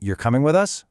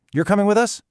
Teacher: asking you're coming with us with your voice going up versus stating you're coming with us with your voice going down. That one little change in intonation totally changes the meaning.